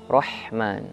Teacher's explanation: Ar-Rahman, ha tenggorokan bagian tengah, hati-hati. Ha jangan jadi ha Rahman, tidak, Rahman.